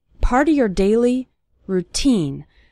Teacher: the syllable teen is stressed in the word routine